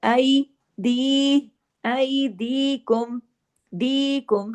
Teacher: या मद्दा होगा, दो हरकत खींच के पढ़ा जाएगा